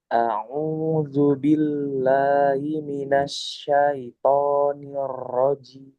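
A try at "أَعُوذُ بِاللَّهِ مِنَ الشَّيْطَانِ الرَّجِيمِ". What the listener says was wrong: Sekali lagi di ro jangan kebanyakan niro niro coba. disamarkan.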